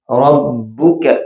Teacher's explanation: کاف باریک پڑا جائے گا